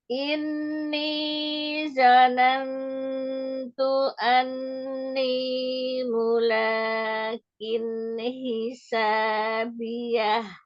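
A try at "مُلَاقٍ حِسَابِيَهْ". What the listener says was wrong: Mulaqin huruf qafnya. Mulaqin hisabiyah.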